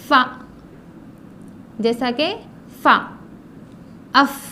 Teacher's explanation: نچلے ہونٹ کو اوپر کے دانتوں کے کنارے سے لگانا ہے. نچلے ہونٹ کو اوپر کے دانتوں کے کناروں سے لگانا ہے، جیسے کہ فا.